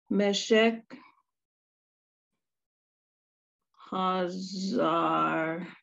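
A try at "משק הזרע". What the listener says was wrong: Hazara, exactly.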